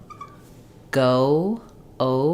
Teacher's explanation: I have our o is typically gliding and closing o o it starts really rounded and then it closes